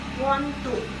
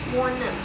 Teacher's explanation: Jadi seolah-olah to-nya ini bergabung dengan kata sebelumnya yaitu want. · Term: assimilation